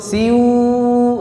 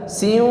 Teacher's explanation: alirkan suaranya ke hidung, jangan hanya di mulut. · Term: gunnah